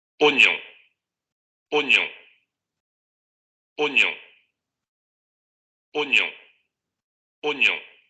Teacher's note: Esta vocal en un principio va a ser una vocal oral y después la segunda vocal es una vocal nasal. El mismo símbolo, solamente que con el diacrítico de nasalidad.